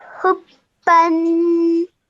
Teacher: you join the ha to the ba with force because of the shadda, and then you produce the sound of the tanween.